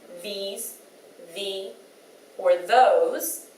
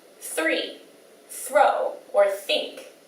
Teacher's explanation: the voiced TH that we hear in words like these, the, or those, and then the unvoiced TH that we hear in words like three, throw, or think